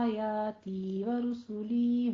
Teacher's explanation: یا مدہ کی آواز پست کرتے ہوئے 2 کاؤنٹ کرنی ہے، کھینچنی ہے، ہونٹوں کو پست کرتے ہوئے آواز کو کھینچنا ہے 2 حرکتوں کے برابر۔